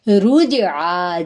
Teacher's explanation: جیم پہ کلکلا ہوگا کیونکہ جزم ہے. یہ رول ہم پڑھ چکے ہیں کہ حروف کلکلا قاف قا با جیم دال ہیں, جب ان حروف کے اوپر جزم آئے گی تو یہاں پہ آواز پلٹے گی.